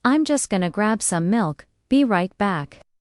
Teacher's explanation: In real life in the US, at a supermarket, someone might say, I'm just gonna grab some milk, be right back. The stressed words, grab milk, back.